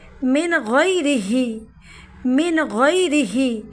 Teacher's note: من پہ اظہار ہوگا چونکہ نون ساکن کے بعد غین حرف ہلکی کا حروف ہے، تو وہ ظاہر کر کے پڑھیں گے، یعنی بغیر گنہ پڑھیں گے